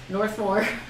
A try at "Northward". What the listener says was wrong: gotta flip your W around again.